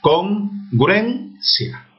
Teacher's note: La U con la E y la I con la A se unen para formar una sola sílaba.